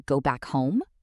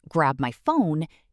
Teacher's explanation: Go back home? Inflection went up. Grab my phone? Inflection went up again.